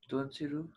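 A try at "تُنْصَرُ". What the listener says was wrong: Tunsaru. Because in mudare, this word, the last second last letter should get zabar. No? Tunsaru.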